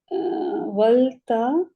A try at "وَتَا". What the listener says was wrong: ول کیوں؟ ولتا کیا ہے؟ کبھی پڑھا ہے آپ نے ولتا؟ وتا. ایسی غلطی نہیں کرے، یہ بچوں والی ہے. وتا.